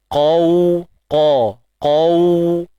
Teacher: Kita kena muncung bibir sebab kita matikan waw tu. Kan waw lin tu, dan makhraj waw kita pun tahu kan, bibir mulut.